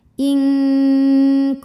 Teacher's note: dengung dengungnya besar samarnya sedikit karena Kaf makhrajnya jauh dari Nun yaitu dipangkal lidah · nun sukun menghadapi huruf ta, maka nun disamarkan ke ta disertai bunyi dengung. Nah ini kebalikan dari yang tadi, dengungnya dikit karena ta makhrajnya dekat dengan nun. · dengungnya dikit karena ta makhrajnya dekat dengan nun. Kuntum, tum ada hukum idgham mimi, sebab mim sukun menghadapi mim hidup, maka mim dimasukkan ke mim yang hidup disertai bunyi dengung, jadi bunyi M tahan. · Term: ikhfa aqrab